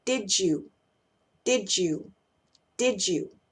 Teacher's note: que empieza con y lo que va a suceder Es que la d+ y van a sonar como J va a sonar ch ahí al medio